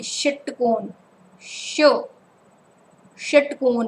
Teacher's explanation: जब आप षटकोण बोलोगे तो इसके जो टंग है आपकी ऊपर की तरफ जाके थोड़ी सी मुड़ जाती है